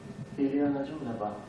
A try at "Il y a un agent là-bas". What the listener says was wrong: de toute évidence, vous voyez que le B est redevenu V. Hein, c'est-à-dire parce qu'on n'a pas poussé la correction suffisamment loin. Donc, il faut s'attarder sur le B. Il faut s'attarder sur le B, le placer à l'initiale.